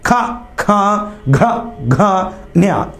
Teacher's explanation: ఇవి కంఠం నుంచి పుడతాయి కాబట్టి వీటిని కంఠ్యాలు అంటారు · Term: కంట్యాలు